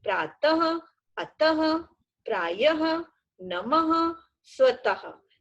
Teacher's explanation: पीछे ध्वनि ह की सुनाई देती है, पर लिखते समय हम ह वर्ण नहीं लिखते हैं, बस दो बिंदु लगाते हैं। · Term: विसर्ग